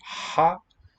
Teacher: there's no obstruction it's just air coming through the what do you call it the oral passage the vocal